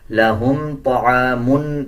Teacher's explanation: اس میں میم کو جب پڑھیں گے غنہ نہیں کیا جائے گا، اکثر لوگ اس میں غنہ کر دیتے ہیں، لہم پڑھ دیتے ہیں، غنہ نہیں کیا جائے گا، لہم طعام پڑھا جائے گا۔